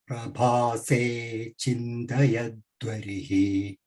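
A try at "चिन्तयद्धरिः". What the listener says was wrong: Dva, no, it is chintayat harihi, chintayadharihi. Dha. dharihi. No, you are saying dva. There is no vakara. There is no va. dha there. Dharihi.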